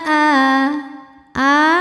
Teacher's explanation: hukumnya adalah mad badal sebab ada Hamzah yang dipanjangkan cara bacanya panjang a-nya ini dua harakat